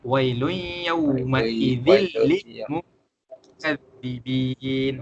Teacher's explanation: Kita masukkan tanwin tersebut ke dalam huruf lam, tapi kita tak dengungkan dia. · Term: idgham bila gunnah